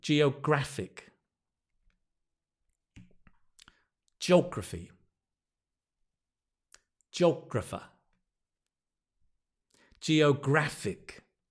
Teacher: notice the stress changes from Geo geographer to Geographic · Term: syllable stress